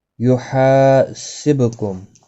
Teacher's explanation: ہا الف مدہ ہے، ایک الف کی مقدار کے برابر کھینچ کر پڑھیں گے، با ساکن پر قلقلہ ہوگا، میم ساکن کے بعد با آیا ہے، اخفاء شفوی ہوگا، گناہ کے ساتھ پڑھیں گے۔